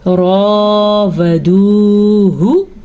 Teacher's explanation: वाव साकिन से पहले दाल पे पेश है तो ये हम खींच के पढ़ेंगे, इसे वाव मद्दा कहते हैं।